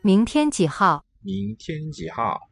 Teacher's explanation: And the tones are 2, 1, 3, 4.